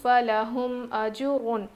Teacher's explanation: تنوین کے بعد حروف حلقی میں سے غین آیا ہے، اسی لیے ہم نون کی آواز کو ظاہر کر کے یعنی ویری کلیئرلی پڑھیں گے